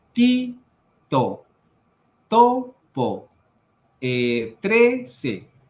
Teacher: Si tenemos una vocal, la T se va a pronunciar. Ahora, la diferencia con el español es que nuestra T está en los dientes